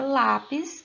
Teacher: a sílaba tônica da palavra lápis está na posição de penúltima sílaba